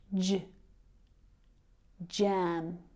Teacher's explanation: This is a combination of the d and zh sounds. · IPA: dʒ